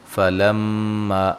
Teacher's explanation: فلما میم مشدد پہ غنہ ضروری ہے